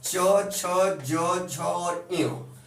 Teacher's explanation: मुंह के अंदर से जो निकलने वाली वायु होती है वो तालु को, जीभ का ठीक ऊपरी वाला हिस्सा, यह तालु को स्पर्श करके बाहर निकल जाती है। इसीलिए इन 5 वर्णों को या च वर्ग को या च वर्ग में आने वाले वर्ण को तालव्य वर्ण कहते हैं।